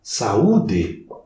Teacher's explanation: eu tenho 2 vogais, são fortes, e elas se separam. Isso eu chamo de hiato.